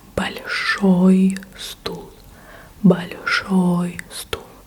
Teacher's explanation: With большой, ой was stressed. The ending was stressed. That's why we got ой.